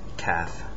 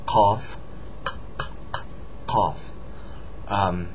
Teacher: Qaf, on the other hand, is different. It's pronounced in the back of the throat.